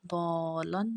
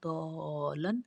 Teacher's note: تشدید کے بعد حرف مدہ، ضاد زبر الف مد، لام دال، لام دو زبر لن، ضالن. مد متصل ہے، اس کو 5 الف کے برابر لمبا پڑا جاتا ہے